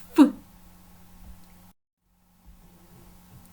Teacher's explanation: один глухий звук який теж не має дзвінкої пари